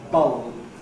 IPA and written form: bʌɫb (bulb)